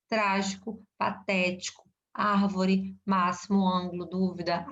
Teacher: lembra das proparoxítonas? A sílaba tônica está na antepenúltima, né? Última, penúltima, antepenúltima.